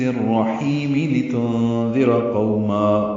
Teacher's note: نون ساکن کے بعد ذال آنے کی وجہ سے اخفا ہے، ساکن کی آواز چھپائیں گے. ذال نرمی سے پڑھیں گے، را پر پڑھیں گے.